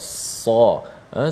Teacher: huruf sa, hujung lidah menekan di belakang gigi bawah kita ini. Nak mudahnya kita boleh rapatkan kedua gigi dan keluarlah angin ataupun sifat sad bila kita menekan hujung lidah itu, dan dia ada sifat yang tebal sa. · Suara pangkal lidah kita terangkat bila menyebutnya dan menjadikan huruf itu dapat dibezakan dengan bunyi huruf sin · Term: huruf sad